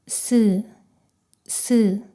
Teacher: 이 사이로 소리가 스쳐 지나가면서 스 스 하고 소리가 납니다. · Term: 시옷